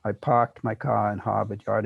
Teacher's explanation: R before a consonant will be realized as, well, as an H, let's say, before a consonant. That is as a lengthening of the vowel.